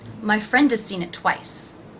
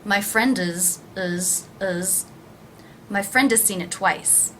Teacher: The word has is pronounced without the H, and again the vowel sound is reduced to the schwa.